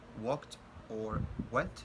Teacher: W, which is voiced velar approximant